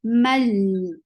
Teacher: This is idgham without gunna, so you're not keeping sound in your nose at all.